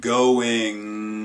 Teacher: You also have some things that are purely nasally released, like an NG, say in the word going. That's your back of your tongue meeting up with that soft palate, but the soft palate's not also closing off the nasal space, so the NG actually travels through the nose.